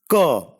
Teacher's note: Ka is a voiceless velar plosive.